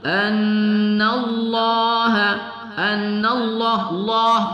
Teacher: anallah kita tebalkan pada lamul jalalah